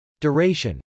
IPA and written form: dˈʊrˈeɪʃən (duration)